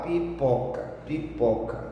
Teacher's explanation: Então você fala devagar, ó, pipoca. Claro, o pó é mais forte. Então a sílaba do pó é a sílaba tônica.